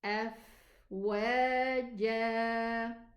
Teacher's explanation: the fa and the waw both are pronounced from the lips.